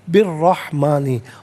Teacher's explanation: اور یاد رکھیں ناظرین کہ را حرف شمسیہ ہے، حرف شمسیہ وہ حرف کے جس پر الف لام ہو لیکن لام کو پڑھا نہ جائے، تو بالرحمانی غلط، بالرحمانی، را پر زبر ہے، را کو پر کر کے پڑھا جائے گا